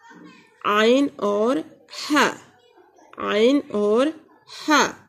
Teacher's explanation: वसतुल हल्क से हम 2 हुरूफ अदा करते हैं, आइन और हा